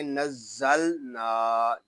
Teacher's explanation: یہاں زا میں سیٹی کی آواز آئے گی اور زا کو لام کے ساتھ ملا دیں گے، لام ساکن ہے، اس کو سکون کے ساتھ ادا کریں گے۔